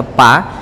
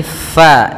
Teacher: Jangan dibaca pa tapi FA alirkan nafas kita